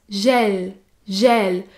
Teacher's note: gel gel s'écrit g e l et se prononce gel gel il s'agit du /ɛ/ ouvert